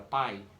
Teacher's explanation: na palavra pai desce do a para o i é decrescente e se é decrescente não separa entendeu ditongo decrescente não separará